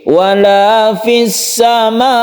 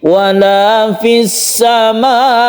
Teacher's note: An-nabr artinya menekan huruf hamzah tersebut sambil ditinggikan sedikit.